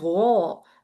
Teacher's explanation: We have here the second level of heaviness, so it's gonna be gha.